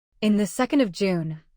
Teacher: of may sound like a quick uh or almost disappear. Train your ear to hear the ordinal and month on each side. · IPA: /ə/